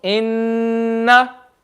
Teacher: Can you see I'm reading it from the nose? Noon Shadda, I won't just read a double, I'll read it from the nose.